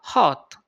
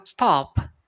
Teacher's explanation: Dia seperti A tapi membulat